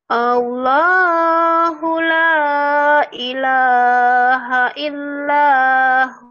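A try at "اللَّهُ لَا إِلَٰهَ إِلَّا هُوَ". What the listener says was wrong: Hu jadi panjang. Allahu la ilaha illallahu.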